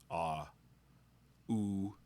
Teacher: There's a constriction at your lips for oo.